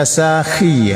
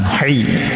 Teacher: ini khi huruf pangkal kerongkongan ya, kalau ha tengah kerongkongan.